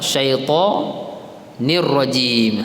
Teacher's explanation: No, huruf ra tu tuan-tuan dan puan-puan. Apabila tuan-tuan masuk ra, tuan-tuan kena ada getaran sikit pada huruf ra tu. Takrir orang panggil.